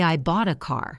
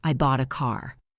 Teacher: You go up on bought and up on car. The other words are just valleys in between the mountains. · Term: stress